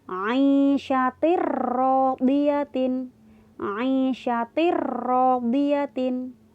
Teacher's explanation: Tanwinnya seakan-akan hilang, langsung masuk di huruf ro. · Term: idgham bila gunnah